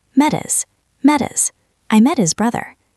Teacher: In casual conversation, small words like him, her, and his usually lose their H sound and stick to the word before them.